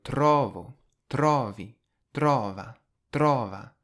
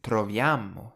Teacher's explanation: You'll notice in all of these verbs, the I, you, he, she, and the they forms all stress on the first O, tro, whereas the we and the you plural form stress the second part after that.